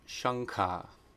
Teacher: if anuswara comes before a guttural sound then it turns into the sound the nasal in the back of the throat